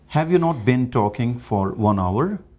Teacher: In spoken, we can simply raise our tone, voice, that is rising intonation to show this is a question form.